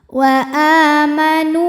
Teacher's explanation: nunnya tetap dibaca panjang dua harakat tidak dileburkan ke wau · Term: mad tamkin